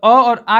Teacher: अ और आ का उच्चारण करते समय हमारी जो मुख की आकृति है आधी गोल होती है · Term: अर्धवर्तुल